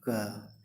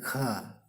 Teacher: महाप्राण के उच्चारण में हकार जैसी ध्वनि उत्पन्न होती है।